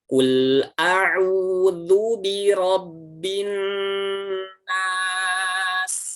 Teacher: nun bertasydid, bibirnya tidak tertutup. Yang tertutup adalah ujung lidah bertemu langit-langit atas